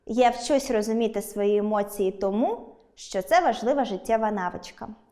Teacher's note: перша частина логічно наголошується, її вимовляємо підвищеним тоном